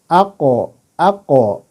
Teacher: satu lagi itu dia yang menonjol adalah Qalqalah ketika disukun